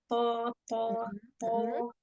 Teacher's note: To-nya di itbaq ya. Isti'lanya juga sempurnakan.